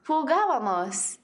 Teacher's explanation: the accent needs to go on the third syllable from the end instead of the second syllable from the end